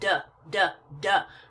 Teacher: my throat and I make the D sound du D du I can feel a vibration I can I can feel movement in my throat so I know the D is voiced because I have to use my voice box to make that